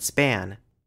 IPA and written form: spæn (span)